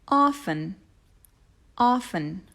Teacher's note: Watch out for that silent T.